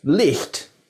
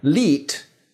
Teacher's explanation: sometimes it disappeared and lengthened the vowel before it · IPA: /li:t/